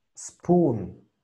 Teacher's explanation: no me vayas a pronunciar E. Es directamente a la S.